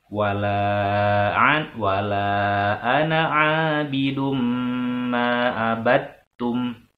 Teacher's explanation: abidum itu harus ditahan karena ada mim bertasdid. Kalau nanti ada hukum idgham, tapi sekarang untuk sementara karena ada mim bertasdid maka harus ditahan dulu, ya.